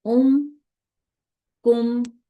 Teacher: میم کو میں نے لمبا نہیں کرنا، اس کو جتنی اس کی حرکت ہے اتنا ہی پڑھتے ساکن کرتے ہوئے میں نے پڑھنا ہے